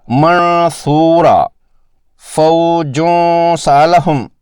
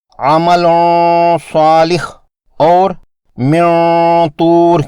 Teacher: اگر نون ساکن یا تنوین کے بعد حرف اخفا مستعلیہ حرف میں سے ہو تو یہ غنہ موٹا کرنا ہوتا ہے